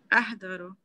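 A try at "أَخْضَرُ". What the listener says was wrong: अहदरू या अखदरू? खा के हा? अखदरू। अखदरू।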